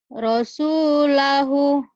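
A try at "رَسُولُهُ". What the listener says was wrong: Lu. Ini doma.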